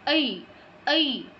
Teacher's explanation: ঐ হচ্ছে অ এবং ই, এই দুটো স্বর নিয়ে গঠিত। তো আমাদের এটা উচ্চারণের সময় খেয়াল রাখতে হবে অ এবং ই এই দুটোর যেন প্রপার উচ্চারণটা আমাদের মুখ দিয়ে বের হয়, ঐ ঐ।